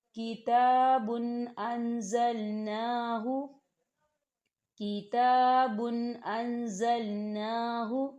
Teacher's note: تنوین ہے، اور تنوین کے بعد حمزہ آ رہا ہے، تو یہاں تنوین کی آواز کو صرف ظاہر کیا جائے گا، غنہ نہیں کیا جائے گا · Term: اظہار